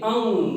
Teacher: देखिए जब आप अंग बोलेंगे तो आपकी जो आवाज है वो नाक से निकलेगी और आप आसानी से बता सकते हैं कि अनुनासिक स्वर में क्या होगा, अंग होगा।